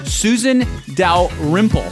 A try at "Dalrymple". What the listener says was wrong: I felt like the emphasis was on the wrong syllable. Dalrymple? Pronunciation aside, I feel like the emphasis, like it's Dalrymple. that's Dalrymple.